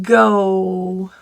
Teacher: The G is voiced. Go. There's your rounded O.